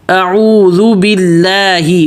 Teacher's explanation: حمزہ واضح کرنا ہے، اعوذ دونوں میں ہونٹ گول